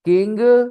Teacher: good evening whenever you have in g at the end or NG at the end only NG then g is silent